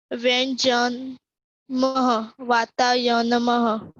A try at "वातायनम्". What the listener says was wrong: वो हाँ, मह नहीं बोलना है, म। वातायनम। Whenever we have that two dots ना, तभी ही हम ह बोलेंगे, otherwise नहीं बोलना है।